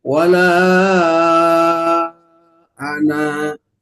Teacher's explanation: kata anak yang tadinya dibaca pendek ketika wasol, maka dibacanya dua harokat, namanya mad. · Tadinya ada alifnya di ana yang warna merah, sekarang dikembalikan lagi karena wakof jadi dua harokat